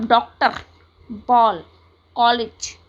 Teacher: बॉल, डॉक्टर आदि में जो अ उच्चारित होता है वह आ और ओ के बीच की ध्वनि का है